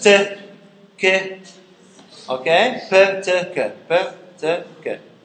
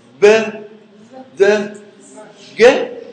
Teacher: There is no vibration in the vocal cords. That's why they are called voiceless. B, D, G. They are voiced because the vibration takes place.